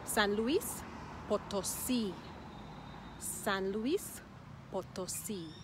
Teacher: The emphasis is at the end, Potosí.